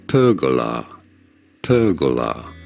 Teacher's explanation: in British English this is normally said as perola with a stress on the first syllable